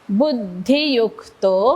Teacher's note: यु वरती आघात कारण पुढे जोडाक्षर